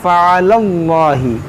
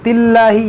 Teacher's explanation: यहाँ लाम मोटा नहीं हो रहा है, बारीक हो रहा